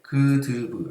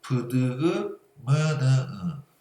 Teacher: 그드브 안 울려. 그드브 안 울리는데 미음, 니은, 이응 얘네 울려. 여기서 소리가 나는 이기 때문에 코가 울리는 거야. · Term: 비음